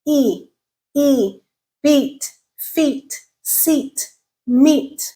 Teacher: e it is a tenth sound High tongue uh height and it's a front sound okay no lip rounding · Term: front vowel